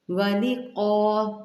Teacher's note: یہ کا نہیں ہے، یہ قا ہے، مستعلیہ حرف ہے، قاف موٹا پڑھیے گا